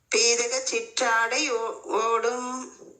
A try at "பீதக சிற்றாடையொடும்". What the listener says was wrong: ஓடுமல்ல, நெடிலமா குரில் தான். பீதக சிற்றாடையொடும். எழுத்து கவனிச்சுக்கணும். பீதக சிற்றாடையொடும். ஓடுமல்ல, ஓடும். ஓடுமல்லமா, ஒடும். நீட்டக்கூடாது. பீதக சிற்றாடை ஒடும். ஓடுமல்ல, பீதக சிற்றாடையொடும்.